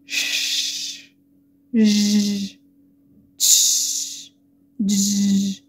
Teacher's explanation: يبقى هنا الصوت بيخرج برضو من الالفيولار ريدج، ولكن من آخر الالفيولار ريدج. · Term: post alveolar